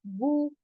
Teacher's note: पेश के अंदर होंठ गोल हो जाएंगे